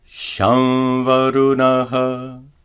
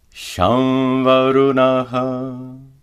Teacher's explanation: Notice that the anuswara is pronounced as a nasalized va.